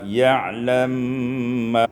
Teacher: idghamul mim fil mim, diidghamkan mim pada mim sehingga kita baca ya'lam ma.